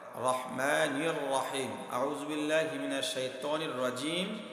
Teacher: মিমের মাখরাজটা ঠোঁটের শুকনো জায়গাতে হয় রাহিম বলার সময় ঠোঁটটা গুছিয়ে নিয়েছি এখানেও মিমের মাখরাজ এ বিষয়টা